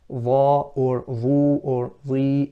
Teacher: has isti'la, direction of sound is upwards, and has itbaq, so the sound is confined between the tongue and the upper palate. Dha or dhu or dhi, it still has isti'la or itbaq in all its scenarios.